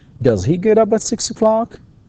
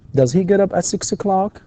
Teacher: في نهاية السؤال يكون فيه rising intonation